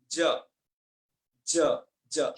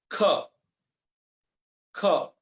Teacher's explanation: देखो ज से बोलने में कुछ कंपन होगा, ज बोलिए, थोड़ा माइंड में एक वाइब्रेट होता है।